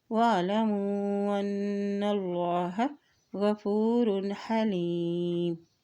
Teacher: نون کے پر شد ہے تو یہاں پر بھی غنہ ادا کرتے ہوئے پڑھیں گے · تو یہاں پر بھی غنہ ادا کرتے ہوئے پڑھیں گے اور اللہ کے نام سے پہلے زبر ہے تو اللہ کا نام یہاں پر بھی موٹا ادا کرتے ہوئے پڑھیں گے